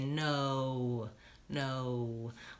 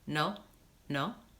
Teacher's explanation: A lot of times the word no is the same word in another language, but there's something that Americans do that you might not be doing that you should know about. And that's when we say the word no, we use a really long O sound. We actually kind of do more than one vowel. We say no, no.